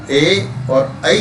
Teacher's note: एतेतो कंठ तालु, ए और ऐ का उच्चारण स्थान कंठ और तालु।